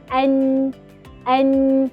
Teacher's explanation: Kita dapat rasakan hujung lidah tu main peranan. Hujung lidah tu bersama lelangit atas yang selari dengannya. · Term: nun